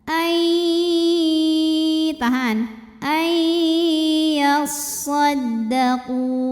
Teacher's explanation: Illa ai ada idgham bil gunnah karena ada nun sukun yang menghadapi huruf ya. Maka nunnya dileburkan atau dimasukkan ke ya disertai bunyi dengung.